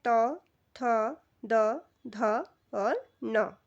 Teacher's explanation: त वर्ग का जो उच्चारण स्थान रहता है वह दंत से रहता है